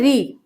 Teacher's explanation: री होता है मूर्धन्य, मूर्धा के द्वारा।